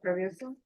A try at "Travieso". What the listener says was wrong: You didn't pronounce all of the vowels.